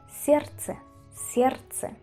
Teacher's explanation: aquí la D pasa a ser una T. Entonces, para que suene más fácil se dice ciercha ciert la d como si desapareciese y la t aparece sierche sierche.